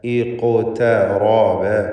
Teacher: ഖാഫിൻ്റെ സുക്കൂൻ ഖൽഖല സുഗ്റ നൽകി ശബ്ദം ഹറക്കത്ത് പോലെ ചലിപ്പിച്ചുകൊണ്ട് ഉച്ചരിക്കേണ്ടതാണ്. ഖാഫിന് തഫ്ഖീം കൊടുക്കുകയും വേണം.